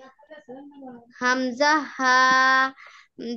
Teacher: 1 number মাখরাজ হলকের শুরু হইতে